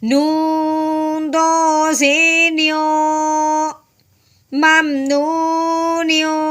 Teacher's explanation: تنوین کے بعد جب ہم نے دیکھا تو فا ہے، فا حرف ہلکی میں سے نہیں ہے. ٹھیک ہے، اب ہم نے کیا کرنا ہے نون تنوین پہ غنہ کرنا ہے، لیکن کون سا کریں گے؟ اخفا کا کریں گے